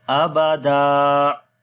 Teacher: when double fatha comes on the stop place and you want to stop, so one fatha you have to skip and one fatha will be there, and then it will be alif madda, right?